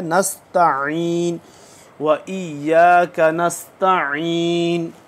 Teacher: आइन को देखें, नस्तईन नस्तईन नहीं पढ़ना, नस्तईन पढ़ेंगे तो हम ये गालिब ये इम्कान होगा कि हम बगैर जो देखेगा नहीं बंदा वो समझेगा ये हमज़ा पढ़ रहे हैं। तो आइन को हमने हमज़ा से जुदा करके पढ़ना है।